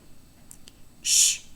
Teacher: it's a voiceless postalveolar fricative